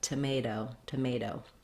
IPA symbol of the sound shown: ɾ